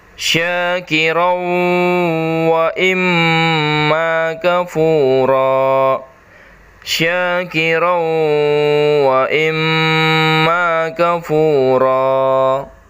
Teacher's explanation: Di situ ada fathatain bertemu waw. Jadi suara n-nya atau suara tanwinnya masuk ke dalam huruf waw.